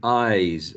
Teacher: The word I ends in a diphthong. So a diphthong or a vowel sound, they're always voiced. So we have to use a voiced z.